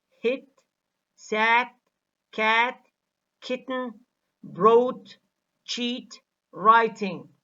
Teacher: T makes the following sound lose some of its voicing because it is aspirated. T has less aspiration when it occurs medially or finally.